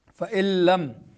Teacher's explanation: نون ساکن کے بعد حروف یرملون میں سے لام آ رہا ہے تو ادغام ہوگا بغیر غنہ